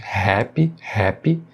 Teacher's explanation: E na palavra happy, mais uma vez, som de H no início, também com aspiração, né? Não é o som do nosso R forte.